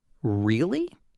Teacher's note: Said with a rising tone, that's a genuine question. Surprised interest.